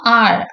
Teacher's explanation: இது மூணும் தான் அப்ராக்சிமேட்ஸ்னு சொன்னோமா இதோட ப்ரொனௌன்சியேஷன் பாருங்க ஆர் எப்படி சொல்லணும் ஆழ் அப்படின்னு சொல்லணும் நாக்கு வந்து மேல தொடக்கூடாது ஓகே ஆழ் அந்த நுனி நாக்கு வரணும் மேல பக்கத்துல வரணும் அப்ராக்சிிமேட்ன்னு சொல்றதே